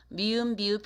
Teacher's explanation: 그러니까 두 입술 소리인데 스스로 미음, 비읍, 피읍 이렇게 발음을 해보세요. 미음, 비읍, 피읍 발음하면 두 입술이 만났다 떨어지는 거거든요